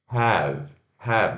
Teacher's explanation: Eu tenho. E pronuncia o H, aquele som aspirado, o A-E-V. Have.